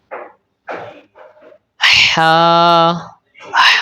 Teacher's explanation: ہا کو آپ نے حلق کے درمیان سے ادا کرنا ہے۔ اس کو ہا نہیں کہنا بلکہ ہا کہنا ہے۔